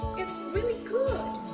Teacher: rising intonation on declaratives